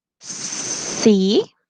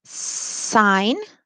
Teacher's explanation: the s sound is alveolar the tongue blade makes slight contact with the alveolar ridge the soft blade is raised the sound is unvoiced and lenis